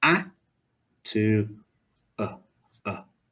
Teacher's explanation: your mouth has gone from wide and open to a bit more round and a bit more narrow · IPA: /ə/